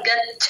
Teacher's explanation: చ కింద చ ఒత్తు ఎప్పుడు పడాలన్న గాలి వదలాలి గచ్ఛ అలా అంటే గచ్ఛతి అంటే చ కింద చ ఒత్తు మాత్రమే వినిపిస్తుంది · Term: మహా ప్రాణం